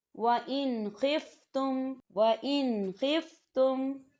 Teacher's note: وَإِنْ خِفْتُمْ، وَإِنْ خِفْتُمْ، تو نون ساکن ہے، نون ساکن کے بعد خا آ رہا ہے، تو یہاں بھی غنہ نہیں ہوگا، صرف نون کی آواز کو ہم ظاہر کریں گے اور غنہ نہیں کریں گے۔